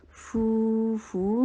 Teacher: فو مدہ ہے، دو حرکہ لانگ کریں گے